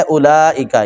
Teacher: بڑا مد ہوتا ہے 5-6 الف کے برابر، اس کو لمبا کرنا ہوتا ہے. اولئک، جی لام کے اوپر بڑا مد ہے، اس کو زیادہ لمبا کریں گے